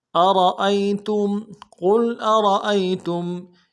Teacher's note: حمزہ کو نرمی سے ادا کریں گے، را کو موٹا کریں گے